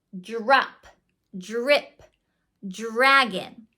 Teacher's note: The other confusing blend that can really trip kids up is DR. When DR is together, it sounds more like dr, like a JR sound. · It's very easy to hear it's a J sound before the R.